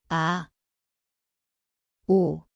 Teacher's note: ieung, It sounds like silent/ing. The place is the throat, silent start.